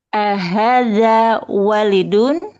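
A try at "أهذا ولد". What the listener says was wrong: Salah. Waladun. Kalau walid ingat kalau walid wanya yang panjang walid. Habis wawu harus ada alif. Nah, kalau dia pendek semua waladun.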